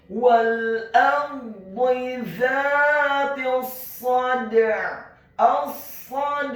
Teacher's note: huruf dalnya dibaca sukun dan wajib untuk dikolkolahkan atau dipantulkan, dan huruf ain-nya dibaca sukun ditekankan keluar dari tenggorokan bagian tengah.